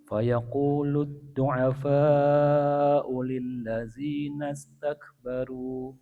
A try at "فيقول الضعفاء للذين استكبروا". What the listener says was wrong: Ya, tadi hamzanya panjang sedikit. Ya, du'afa'u ulil ladzina. Iya, enggak panjang. O langsung ke huruf lam. Di situ ada alif tapi ada tanda bulat di atas, artinya dihilangkan atau u-nya dibaca pendek. Jadi fayaqulu ad-du'afa'u lil-ladzina.